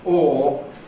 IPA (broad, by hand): ɔː